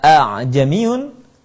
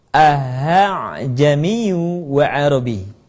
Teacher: tashil adalah membaca Hamzah yang kedua dengan suara yang ringan